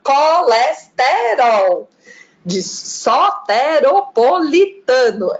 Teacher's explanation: E tem uma coisa que eu acho legal no baiano, que ele abre, né? Todas as vogais, elas são super abertas.